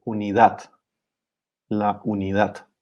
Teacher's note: in Spanish, we stress the last syllable here